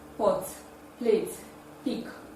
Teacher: There is minimal vibration in the production of pa at the vocal cord. Hence, it is a voiceless bilabial plosive sound. It can be realized at the initial, middle, and final position of English words.